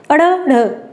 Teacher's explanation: देखें उत्क्षिप्त क्या होता है कि जीभ ऊपर की तरफ जाती है, एक झटके के साथ नीचे आ जाती है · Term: उत्क्षिप्त व्यंजन